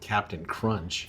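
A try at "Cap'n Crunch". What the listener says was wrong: you don't pronounce the tea there's no tea in it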